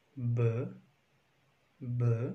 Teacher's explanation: while pronouncing b, you feel a very good vibration on your thyroid cartilage while putting these two fingers on this cartilage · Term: voiced consonants